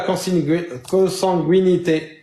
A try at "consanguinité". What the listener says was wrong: Ça se prononce pas le U, il y a Zah.